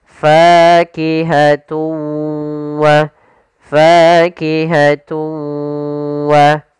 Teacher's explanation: suara tanwinnya kita masukkan langsung ke huruf waw dan kemudian kita tahan gunnahnya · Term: idgham bi gunnah